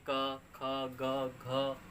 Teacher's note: वह कंठ से बोले जाते हैं